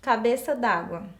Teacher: Eu tenho aí a omissão da vogal E, quando eu juntei a preposição com a minha segunda palavra.